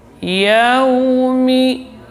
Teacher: Yaumi. Karena waw makhrajnya bin dhimami syafataini, dengan memonyongkan kedua bibir di saat awal penyebutannya